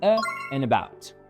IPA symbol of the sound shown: ə